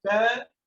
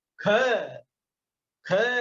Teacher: जैसे क बोलेंगे तो अल्प प्राण रहेगा, ख बोलेंगे तो महाप्राण है। बोल के देख लीजिए, जैसे क ख ख, एकदम अंदर से जोर लगता है अपने आप।